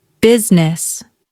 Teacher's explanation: the pronunciation is simple. Business. Notice, the middle vowel disappears. >> Example, she owns a successful business.